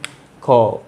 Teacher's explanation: যখনই আমরা খ ধ্বনিটা উচ্চারণ করি তখন কিন্তু একটা হ ধ্বনি এসে যায়। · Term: মহাপ্রাণ